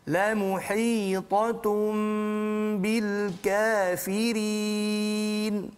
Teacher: gunnah iqlab tu juga sama macam gunnah lain, 2 harakat sahaja